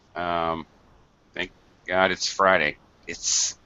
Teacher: You almost don't hear the T in that very, very colloquial expression.